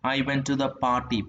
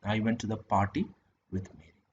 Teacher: the tonic would fall on the first syllable of the word party.